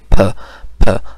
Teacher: अच्छा, अब जब एयर इधर तक आ जाती है फिर क्या होता है कि जब हमारी ट्रैकिया में आ जाती है, अब साउंड जिस तरह का होगा, ठीक है, तो उस लिहाज से जो है वो फॉर एग्जांपल अगर हम कहेंगे फ, अब जब हम कहेंगे तो हवा जो है वो माउथ में एक दफ़ा रुक जाती है। ठीक है, और फिर अचानक से वो है वो सडनली रिलीज़ होती है